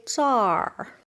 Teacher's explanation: People in North China, especially in Beijing, they don't say 这里, and they say 这儿. Sounds like a R at the end.